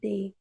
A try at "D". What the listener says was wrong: We can't pronounce it as a day. It should be they. They.